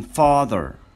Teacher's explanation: The lips, apart, منفصلتان. As if you are yawning, not rounded. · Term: as in father